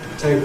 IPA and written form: ˈteɪbo (table)